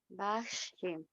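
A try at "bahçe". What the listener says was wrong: Es que como que le metes como un sonido, una she, como el de la S con el ganchito abajo.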